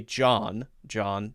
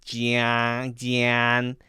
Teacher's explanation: if I make more air go through my nose and stretch my mouth wider, then it sounds like Jan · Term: more nasally